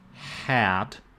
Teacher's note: hat has this vowel which is low in tongue position and it has a relatively high f1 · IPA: /æ/